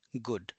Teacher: So it's the oo. So it's the short oo sound and in Japanese also it is perceived as a short u.